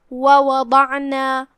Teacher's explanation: پھر حرف العین ہے، ہم عین کو حلق کے درمیان والے حصے سے پڑھیں گے اور جو کہ اس پہ جزم ہے، لہذا ہم اسے ظاہر کریں گے. · ضاد کی ادائیگی زبان کے کروٹ اور اوپر کے داڑھوں کے جڑ سے ہے، لہذا ضاد کو وہیں سے پڑھنا ہے اور اسے بھاری آواز میں بھی پڑھنا ہے کیونکہ ضاد حروف تفخیم میں سے ہے.